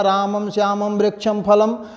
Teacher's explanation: अनुस्वार का उच्चारण स्थान नासिका होती है